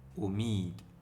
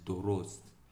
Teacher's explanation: wannan wasalin za a kira shi O ne ba za mu ce U ba kamar yadda yake a Hausa ko wataƙila Larabci. Wannan O kamar yadda ya zo a nan a suna O. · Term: wasali na O